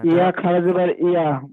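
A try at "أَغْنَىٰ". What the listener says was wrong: এটা ইয়া নয়, এ নোক্তা আছে, একটা নোক্তা দেখেন কি হবে, ইয়াটাই লেখা থাকবে, পড়া হবে না। নুন খাড়া জাবার না। শোনেন, মা টান হবে, মা আও না।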